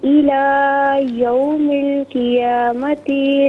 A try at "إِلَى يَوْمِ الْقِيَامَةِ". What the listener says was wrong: قیامتی میں تا کو کھینچیے مت، قیامتی